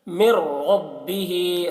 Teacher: نون کو را سے ملا کر بغیر غنہ کے پڑھیں گے، اس کو ادغام تام کہتے ہیں۔ من ربہ، را کو پر پڑھیں گے، را مشددہ کے اوپر زبر ہے۔